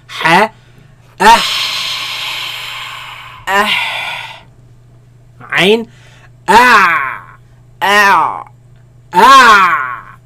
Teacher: They come from the middle of the throat, where the epiglottis moves back towards the back of the throat, right? And constricts the passing of the sound and the air, right?